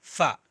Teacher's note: پھا نہیں بولنا ہے، دونوں ہونٹوں کو ملانا نہیں ہے